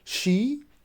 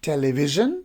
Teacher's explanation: So the first post alveolar or alveolar palatal we have, that is sh, and the second one is j. So sh is voiceless and j it is voiced.